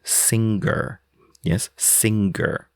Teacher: some British add, what I would refer to as a second guttural G to words like singer.